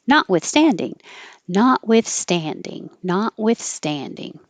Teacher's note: Stan is secondary stress which means it gets longer but not higher because you don't want to have too jumpy notwithstanding not withstanding